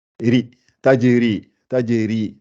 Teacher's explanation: le ra avec le i, le ri, ça veut dire qu'elle n'est pas gonflée.